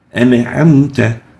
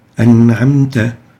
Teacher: What we should do is we shouldn't make qalqala for this noon, and the noon is just a simple noon sakina without qalqala